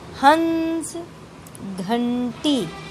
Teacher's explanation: इसमें हमारे नाक का भी प्रयोग हो रहा है। आवाज़ ऐसी लगती है जैसे नाक की सहायता से हम बोल रहे हैं। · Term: अनुस्वार